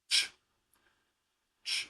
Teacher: there's no vibration of the vocal cords. It's just air getting passed through configuration in the mouth. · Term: unvoiced